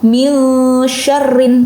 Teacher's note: Jadi nun sukun atau tanwin yang dibaca samar antara jelas dan lebur dengan dengung. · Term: ikhfa